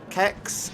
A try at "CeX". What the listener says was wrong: I'd say sex. It's a soft C.